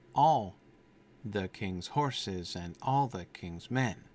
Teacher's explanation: It slips into anapest, basically. We start with a stress on the first syllable, but then after that, we've got after the first syllable, we have perfect anapestic feet, right?